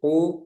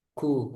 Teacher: kalau qof dia enggak ada udara kaf ada udara